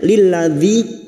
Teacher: kasrah bertemu ya sukun 2 harokat mad tabi'i